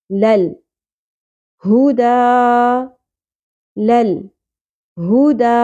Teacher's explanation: علینا عین مستحلق سے لئی یا ساکن سے پہلے زبر حرف لین لے نہیں پڑھنا لئی نا نون زبر کے ساتھ الف حرف مدہ آ گیا نا علینا لل ہدا لل ہدا دال کے اوپر کھڑی زبر ہے ایک الف کے برابر کھینچیں گے